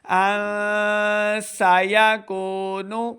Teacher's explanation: نون ساکن کے بعد آگے سین حروف اخفا میں سے ہے، تو یہاں پہ ہم نے اخفا یعنی غنہ کر کے پڑھنا ہے. ان سیکون، ان سیکون نہیں کریں گے، ہم نے نون ساکن کی آواز کو چھپانا ہے، اخفا کرنا ہے.